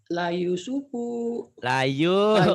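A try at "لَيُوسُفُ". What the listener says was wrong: Layu panjang. La Yusufu wa akhuhu. Pendek punya ya. Yusufu.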